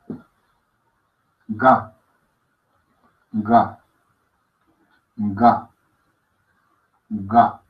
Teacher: Ga es sonora, oclusiva, no soplada.